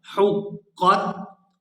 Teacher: حا قاف پیش حق، یہاں آپ نے تلفظ کا بھی خاص خیال کرنا ہے۔ حا کو حلق سے اچھی طرح سے ادا کریں گے اور آگے قاف کو پورا ادا کیا جائے گا۔ حا قاف پیش حق، قاف تا زبر کت، حقت۔